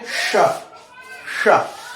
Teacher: तालव्य, ठीक है। तो श को उच्चारण करते समय तालु से जीभ टकराती है, तालु से हवा टकराती है